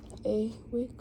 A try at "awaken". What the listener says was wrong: There's an N at the end.